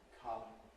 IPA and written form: kʌm (come)